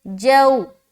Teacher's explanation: واو لین کو نرم آواز کے ساتھ جلد اور معروف پڑھیں گے